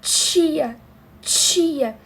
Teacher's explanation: a gente meio que segura o ar e depois vem a fricção